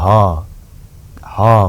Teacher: ह भन्दा पनि घाँटीबाट पुरा सास बाहिर निस्किन्छ।